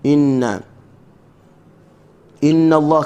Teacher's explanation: kalimah Allah dibaca tebal sebab masuk dengan bagi atas.